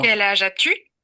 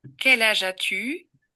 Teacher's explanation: Dans la première, on entend un accent d'intensité. Dans la deuxième, un accent de durée.